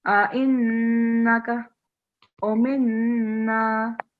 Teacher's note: Just the noon with shadda, so nasal sound, okay, hunna sound.